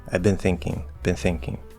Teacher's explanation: You can nasalize the I and not actually go into the N.